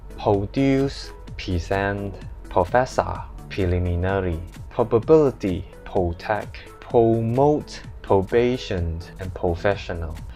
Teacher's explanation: normally Hong Kong people skipped the R sound, so they don't literally pronounce as R.